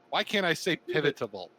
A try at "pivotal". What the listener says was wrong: Pivotal. You have too many syllables in there. Too many syllables.